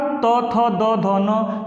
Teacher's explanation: जिह्वा हमारी दांत में स्पर्श करती है, दांत में आके टच करती है, त थ द ध न, तो इस दांत में छूती है, इसीलिए इसको कहते हैं दंत व्यंजन, दंत व्यंजन।